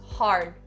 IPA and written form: hɑːrd (hard)